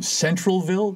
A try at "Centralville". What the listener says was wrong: they pronounce it Centerville, but it's spelled Centralville, but it's said like it's Centerville, yeah.